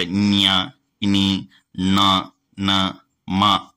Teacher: ముక్కుతో పలికేటి కాబట్టి వీటిని అనునాసికాలు అంటారు. సో ముక్కుతోటి గాలి వెళ్ళకుండా వీటిని పలకలేం.